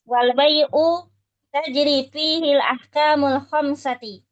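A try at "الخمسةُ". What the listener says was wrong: Bukan khamsati. Sudah betul tadi sebelumnya.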